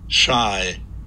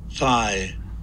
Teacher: we see this sibilance again for esh, where it's high intensity at the higher frequencies